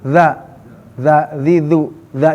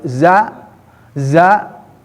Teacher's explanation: jadi harus digigit bukan za tapi dza